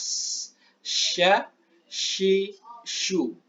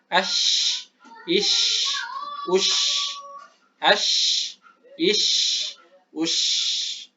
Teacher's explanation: tengah lidah bertemu atau sejajar dengan wasatu al-hanaki al-a'la, sejajar dengan pertengahan rahang atas. Di sini keluar huruf sya.